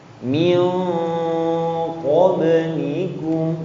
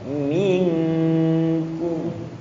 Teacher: qaf itu tebal, kaf itu tipis. Makanya min qablikum.